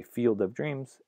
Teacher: you might say field of dreams and keep the D in field, but if you say field goal, you might drop the D because it's before a consonant.